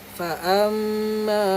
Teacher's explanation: Ma kena panjang sikit sebab ada alif. Jangan fa'amma.